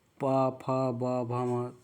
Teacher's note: आप देखेंगे ओष्ठ से दोनों ओठ आपस में सट रहे हैं, या फिर ओठ के आपके आकार बन रहे हैं।